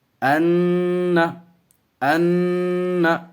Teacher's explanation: 1 الف کے برابر ناک میں آواز کو روکے رکھیں گے، اس کے بعد چھوڑ دیں گے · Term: گناہ